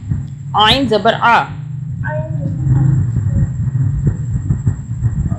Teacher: اس کو حلق سے عین پڑھنا ہے، الف کی آواز عین نہیں پڑھنا